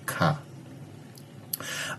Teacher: donde el dorso o la parte posterior de la lengua se eleva y se acerca o se pone en contacto con el velo, como en el sonido K. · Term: velar